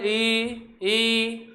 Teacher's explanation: दांतों के जस्ट ऊपर वाला हिस्सा जहाँ चिकनापन है वहाँ पे जीभ आपकी टकराएगी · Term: तालु